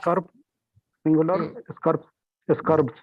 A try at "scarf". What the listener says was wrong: Don't don't pronounce R. I told you it's not scarf, it's scarf.